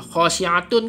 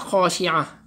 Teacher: Jadi huruf ta marbutah ini dia jadi huruf ha.